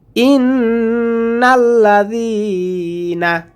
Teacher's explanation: এখানে গুণনা করব নুনের উপরে তাসদীদ আসার কারণে